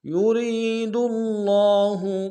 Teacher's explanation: یرید اللہ میں یا کو ہم سے ادا کریں گے، را کو یا کے ساتھ ملانا، یا مد ایک انداز میں کھینچیں گے، را کو باریک ادا کریں گے کیونکہ اس کے نیچے زیر ہے، دال کو لفظ اللہ کے لام کے ساتھ ملانا ہے، تشدید زور دیں گے، یا کے لام کے اوپر کھڑا زبر ہے، ایک انداز میں کھینچیں گے۔